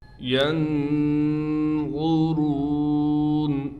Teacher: نون پر اخفا یعنی غنہ کیا جائے گا، غا کو ہم موٹا کر کے پڑھیں گے۔